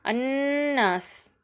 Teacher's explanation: பெற்றிருக்கிறதுனால இதை நம்ம வல்லினமாக ஓதணும் அன்னாஸ் இங்க நூன் சத்து பெற்று வந்திருக்கு சத்து பெற்ற நூனை அழுத்தி உன்னா செய்து நம்ம ஓதணும்